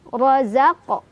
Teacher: Ro-nya dibaca secara tafkhim karena ro berbaris fathah, jadi ditebalkan. Razaq. Ada qalqalah sura karena ada huruf qalqalah yang sukunnya sukun asli, bawaan bahasa Arabnya ya.